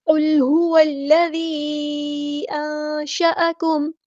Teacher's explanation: قاف ہمارا heavy letter ہے پورا ادا کریں گے. اور میم کو ہم ساکن کر دیں گے وقف کرتے ہوئے، اور مد عارض بھی ہوگی یہاں پر.